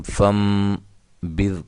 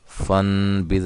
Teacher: فن نہیں، فم، اس نون کو میم سے چینج کر دیں گے، بدل دیں گے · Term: اقلاب